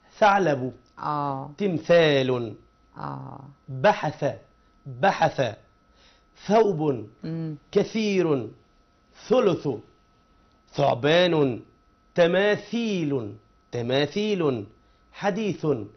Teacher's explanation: طرف اللسان مع الثنايا العليا للفم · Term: حرف الثاء